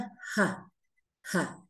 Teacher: Y suena como una ja, ja. Es más fuerte que el bisarga, porque recordemos que la H en sánscrito nunca es muda. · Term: aspirada fuerte